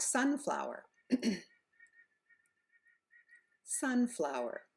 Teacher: we do with our intonation for compound nouns it's very easy we stress the first word and we stress it by using a longer vowel a louder volume and a higher pitch